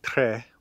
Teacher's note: most modern Norwegians say Tre with a lowered vowel that vowel lowering is something else you'd have to get used